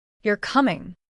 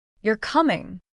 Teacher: This is the falling tone statement. You're coming. This is the rising tone question.